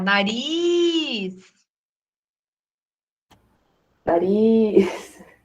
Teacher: é uma oxítona, a última sílaba é a mais forte